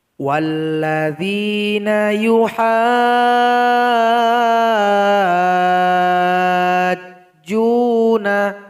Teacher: Bacaan sulit yang keempat terdapat di dalam surat Asy-Syura ayat 16. Di sini ha mesti dipanjangkan 6 harokat atau 6 ketukan, kemudian ditasydidkan kepada huruf jim.